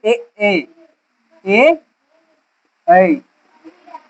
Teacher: वर्ण है जिसका उच्चारण कंठ और तालु दोनों से होता है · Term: कंठ तालु